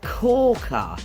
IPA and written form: ˈkɔː.kər (CORKER)